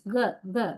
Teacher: Back of the tongue rising and touching the velum. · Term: velar consonants